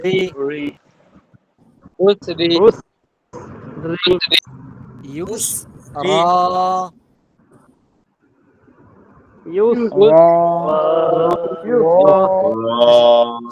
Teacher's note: শেষের শব্দ বাতাস বের হবে সিনে